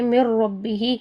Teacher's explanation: نون اور را ایک ہی تقریباً قریب قریب مخرج ہیں، ٹھیک ہے۔ تو یہ ادا ہوتے ہیں، یعنی طرف اللسان سے جو ہے نا وہ ادا ہوتے ہیں۔ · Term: ادغام متقاربین